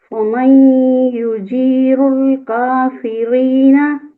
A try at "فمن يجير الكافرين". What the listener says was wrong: جی رو کا مخرج نا یجیر الکافرین میں لائک ایسے نہ لگے کہ آپ زبان کو موڑ رہی ہیں، ٹھیک ہے؟ آرام سے یجیر الکافرین، رول ایسے کر کے نہ آئے، رول آئے، ٹھیک ہے؟ یجیر الکافرین.